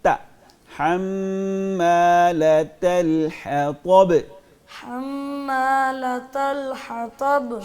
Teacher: تا باریک ہے زبان کو نیچے رکھ کے